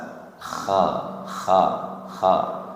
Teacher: Kha tenggorokan atas sama bukan huruf bibir. Hanya dibuka kemudian tempatkan di tenggorokan atas. Kha. Bibirnya tidak usah hu.